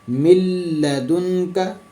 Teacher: इदगाम बिला गुन्ना, मतलब मिलाना तो है लेकिन गुन्ना नहीं करना। उसमें दो हरफ हैं, लाम और रा, जैसे कि मैं पहले भी आपको बता चुका हूँ। · यहाँ पे नून गुन्ना जो है इसका गुन्ना नहीं करेंगे हम, नून पे गुन्ना नहीं होगा। मीम ज़ेर को डायरेक्टली, मतलब मीम ज़ेर को हम सीधा लाम के ऊपर शद आ रही है तो इससे मिला देंगे।